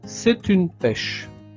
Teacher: je fais la liaison entre le T et le U. C'est une pêche.